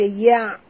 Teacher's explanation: Ya adalah huruf istifal. Jadi kita baca ya bukan yo ya.